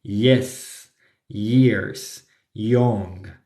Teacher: cuando la palabra empieza con Y, no va a sonar como Y en español, sino como I